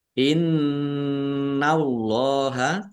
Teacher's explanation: Innallaha nun tasdid dibaca gunah atau mendengung ditahan biar tampak mendengungnya. Allahnya dibaca tebal karena harokat di depannya fathah. Lam fathah berdiri mat tobi'i.